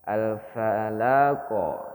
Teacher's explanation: jadi tidak ada Jedah jangan ditahan alfalaq Nah itu salah ini enggak ada Jedah antara pantulan dengan bunyinya itu enggak ada Jedah